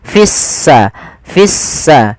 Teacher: Artinya lamnya dianggap tidak ada sehingga langsung diidgamkan ke huruf sin sehingga sin-nya berharakat tasdid. Seakan-akan s-nya dua. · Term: Alif lam syamsiyah, alif lam syamsiyah